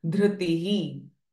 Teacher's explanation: This r sound, dhritihi. So last visarga at the end of the sentence we will have h sound.